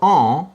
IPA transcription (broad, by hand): ɑ̃